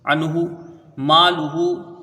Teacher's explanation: لام کے اوپر پیش ہے، اس کو جلدی پڑھیں گے، ہاں کے اوپر الٹا پیش ہے، واو مدہ کے قائم مقام ہے، اس کو کھینچ کے پڑھیں گے 1 الف کے برابر